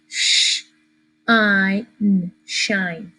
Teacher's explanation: But because the mean bully E is going to pinch that I, it's no longer going to be an I as an insect. It's not a short I anymore. It becomes a long I, and the long vowels like to say their names.